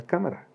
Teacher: Las esdrújulas, cuando la sílaba tónica es la antepenúltima, por ejemplo la palabra cámara.